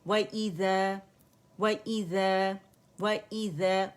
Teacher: واو باریک ہے، complete rolling ہوگی لپس کی